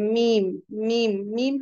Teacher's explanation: मीम, मीम, मीम हम कहेंगे तो हमारा एकदम जो लिप्स है वो प्रॉपर एक दूसरे में चिपक जाता है, मीम। तो मीम दोनों होठों की खुश्की से निकलता है, यानी कि आउटर पार्ट से लिप्स के